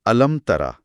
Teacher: अलम का मीम बिल्कुल साफ है और फौरन ता की आवाज आ रही है · علم کا میم بالکل صاف ہے اور فوراً تا کی آواز آ رہی ہے